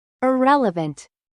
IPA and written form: ɪˈrɛlɪvənt (IRRELEVANT)